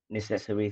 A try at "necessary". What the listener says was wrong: Not necessary, but necessary. So I know this word in English is a problem. The adjective is necessary. The noun is necessity, but the adjective is necessary. Not necessary, but necessary. So this is something we call word stress.